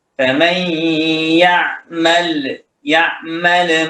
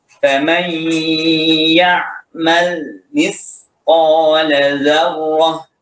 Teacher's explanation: Muncul satu satu huruf jadinya, ya, dari lam sukun ini. Maka ketika melafalkan lam, tahan, jangan sampai mantul. Juga ketika mengemukakan atau membaca ain juga jangan sampai mantul.